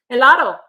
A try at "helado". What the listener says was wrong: Don't say the H.